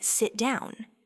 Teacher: for a command like sit down, your voice definitively falls on down. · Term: falling intonation